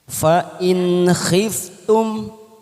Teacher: Fa in khiftum ada huruf nun sukun bertemu kha. Kita baca jelas tanpa mendengung namanya bacaan idhar halki